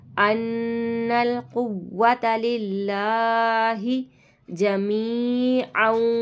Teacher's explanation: نون مشدد کا گنہ کریں گے پھر ہم نون کو لام کے ساتھ ملائیں گے.